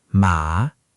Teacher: dipping down then up